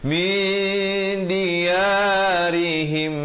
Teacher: Nak kata nun pun tidak, dal pun tidak, dengan kadar panjang dua harakat. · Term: bacaan yang samar